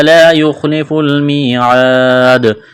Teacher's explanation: یہاں پر وقف کریں گے تو دال کو ساکن کریں گے، دال پر قلقلہ کریں گے